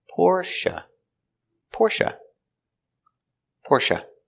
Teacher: Stress on the first syllable.